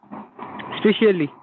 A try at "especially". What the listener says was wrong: Yeah, not specially, especially. You see the face while I speak this word, especially. So you open face, especially, not especially. Look at the movement.